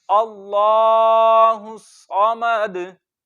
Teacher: दाल को जब साकिन किया तो सबसे ज्यादा जुम्बिश होगी, जुम्बिश मीन की आवाज लौटती हुई निकलेगी।